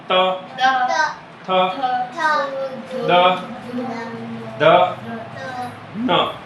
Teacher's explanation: दांत से है। इनको बोलते हैं त वर्ग और त वर्ग को हम दांत से उच्चारित करते हैं।